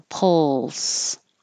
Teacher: the L has constant air flow and the S has constant air flow